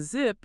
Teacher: But Z, like in zip, your vocal cords are buzzing.